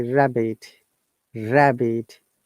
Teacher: Two syllables. Stress in the beginning.